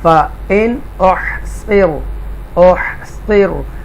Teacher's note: نون ساکنہ کے بعد حروف حلقیہ میں سے حمزہ ہے تو کلیئر پڑھیں گے نون کو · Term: اظہار